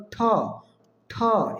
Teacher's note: এটি হল মহাপ্রাণ বর্ণ বাতাসের চাপ বেশি থাকবে